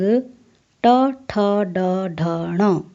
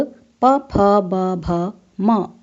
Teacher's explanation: क से म तक के ये 25 वर्गीय वर्ण स्पर्श कहलाते हैं, क्योंकि इनके उच्चारण के समय जिह्वा मुख के विभिन्न भागों का स्पर्श करती है